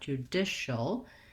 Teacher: And then we have the CIAL says shul. So we have an SH sound, even though it's spelled with the CI. Judish. So just like the word dish, but short, judicial.